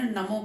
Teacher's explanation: न ह्रस्व है, उसमें एक मात्रा है, मो दीर्घ है, उसमें दो मात्रा है